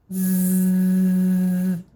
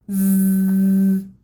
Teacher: You do all the same stuff with your mouth, your teeth go together, your tongue comes forward, you're pushing air out, but your voice box has to be on. Your vocal cords need to be buzzing in your throat. If you put your hand on your throat while you make this sound, you should feel that gentle vibration. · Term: noisy sound